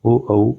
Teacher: कंठोष्ठ का मतलब है ये कंठ और ओष्ठ की सहायता से उच्चारित होते हैं। इनमें ओ औ आते हैं। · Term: कंठोष्ठ स्वर